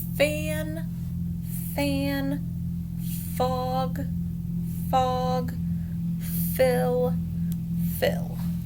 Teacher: Is your voice vibrating? Nope, it's unvoiced.